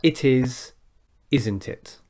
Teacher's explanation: a bit of practice with a downward intonation a negative question tag